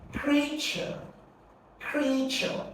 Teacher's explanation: creature is a name of something, so it's a noun. Therefore, you're going to stress the first syllable